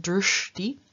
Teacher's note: the palatal sha and the dental are combined and both of them change into their retroflex counterparts